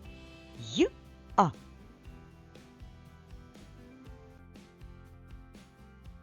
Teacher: буква Я на початку складу або на початку слова завжди позначає два звуки